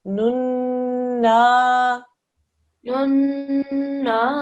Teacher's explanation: Noon here, joining onto a noon mushaddad. So we're going to do a 2-second nasal sound.